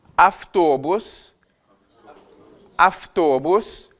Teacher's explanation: Alors, donc, le auto en russe va se transformer en avto. On va avoir un phénomène phonétique d'assourdissement de la consonne V.